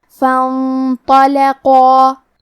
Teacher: قاف کی ادائیگی زبان کی جڑ اور تالو کے نرم حصے سے ہے · قاف حروف التفخیم میں سے ہے، لہذا ہمیں قاف کو موٹی آواز میں پڑھنا ہے کیونکہ اس کے بعد مد الف ہے اور مد الف اپنے پیچھے والے حرف کا حکم لیتا ہے تفخیم میں اور ترقیق میں، لہذا ہمیں مد الف کو بھی بھاری آواز میں پڑھنا ہے.